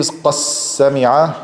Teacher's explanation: merging dal into sin